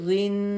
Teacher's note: تھوڑی دیر آواز ناک میں رکی ہے نا